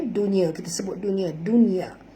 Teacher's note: nun mati bertemu ya dalam satu kalimah tak boleh dengung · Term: izhar mutlak